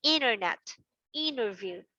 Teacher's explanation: In most of the English words where N is followed by T, okay, it's okay not to pronounce the t sound